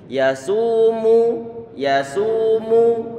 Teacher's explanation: Yasu ini kata su ditommahkan, berarti perlu untuk kita monyongkan bibir kita.